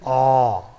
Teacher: Since provided with a colon mark there, so it will be called a long vowel. So aw is a back rounded vowel between half open and half close position